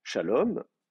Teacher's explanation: J'ai deux syllables. Shalom, c'est la dernière qui est accentuée.